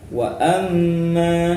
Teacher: di sini ada mim tasdid. Contoh dari gunah musyaddadah.